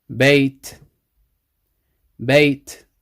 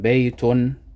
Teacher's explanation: But it's dropped. The n sound is dropped when stopping. So when you stop, there's no n sound. So this would be bait.